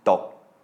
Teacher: The first stop consonant is gogai, which makes a kind of a cut-off K sound at the end of a syllable